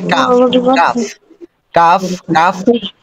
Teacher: কফের উচ্চারণ হবে তার একটু উপর থেকে উপরে জিবার গোড়া না গোড়ার চেয়ে একটু উপরে উপরে তালুতে লাগবে স্পর্শ করবে